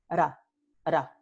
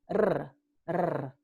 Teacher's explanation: Las dos son de modo vibrante porque tenemos vibración entre el ápice de la lengua y los alveolos. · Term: vibrantes